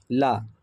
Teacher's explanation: ल जो है वो पार्सिक व्यंजन है।